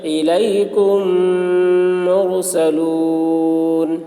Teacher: میم ساکن کے بعد میم آ رہا ہے اس لیے میم کو میم کے ساتھ ملا کر غنہ کے ساتھ پڑھیں گے ، اس کو ادغام شفوی کہتے ہیں۔ الیکم مرسلون لہم ما